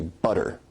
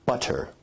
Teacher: where you say butter that involves a full t stop